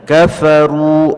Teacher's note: Kafa, itu tidak boleh karena tidak ada huruf mad di situ, maka tidak boleh dipanjangkan. Kafaru, ru-nya baru ada huruf mad asli 2 harakat baru boleh dibaca panjang